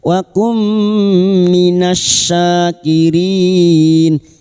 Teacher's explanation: nun sukun bertemu mim idgham bi gunnah, masuk pada huruf mim dan mendengung selama 3 harokat